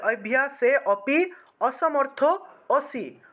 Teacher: অসি এটা হসি হবে না, হ হবে না, এটা অ হবে